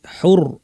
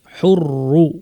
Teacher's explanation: জবর বা পেশ থাকলে পুরা র টাই ভারী হবে